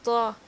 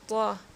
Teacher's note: آپ غور کریں، جب آپ اس کو تلفظ کریں گے، جب اس کو آپ پڑھیں گے تو تب آپ کو پتہ چلے گا کہ زبان کا جو سرہ ہے، یعنی کہ زبان کی جو نوک ہے وہ جا کر سامنے کے اوپر والے دانتوں کی جڑوں سے مل رہی ہے